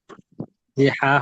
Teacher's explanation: হা হলকের মধ্যখান থেকে উচ্চারিত হয়।